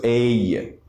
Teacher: wrong because you're pronouncing a a is just one sound but when you say a your lower jaw goes up to articulate the second part of the vowel